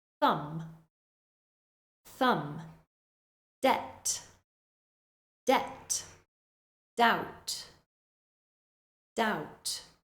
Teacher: similar word thumb thumb debt debt doubt doubt in these words you should just imagine that the B is not there at all